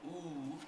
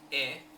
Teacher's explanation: the ooh sound is rounded ooh your lips are rounded but for example the e sound e is unrounded e there's no rounding going on